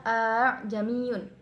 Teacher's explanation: Tasil yaitu menyamarkan hamzah yang kedua dan membaca secara jelas hamzah yang pertama